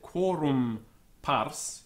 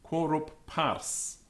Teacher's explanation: the M was always omitted in speaking and the following consonant pronounced as if it were doubled